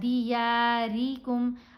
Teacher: را کو باریک پڑھا جاتا ہے جب اس کے نیچے زیر ہو. اگر را کے اوپر زبر ہو یا پیش ہو تو پھر را کو موٹا پڑھتے ہیں.